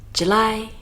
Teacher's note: Careful of this one, we put the stress on the lie, and if we put the stress at the beginning, it would sound like the girl's name, Julie.